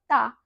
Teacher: आपकी जो जीव आपके दांत को स्पर्श कर रही है